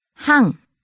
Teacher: Starts high, ends low.